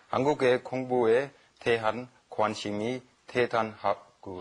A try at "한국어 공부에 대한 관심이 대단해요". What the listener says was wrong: And it's 한국어, right? Not 한국애, right?